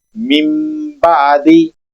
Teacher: इकलाब करेंगे। नून की आवाज को मीम में तब्दील करेंगे और फिर पढ़ेंगे मिम बादी।